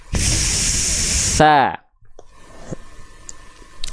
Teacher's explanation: Kalau huruf sa adalah huruf zal yang bocor nafasnya